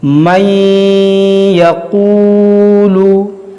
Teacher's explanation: اب یہاں پر دیکھیے نون ساکن کے بعد یا ہے، یا حروف یرملون ہے، تو یہاں پر ہم ادغام کا قاعدہ لگائیں گے اور غنہ کریں گے، نون کو یا میں داخل کر کے پڑھیں گے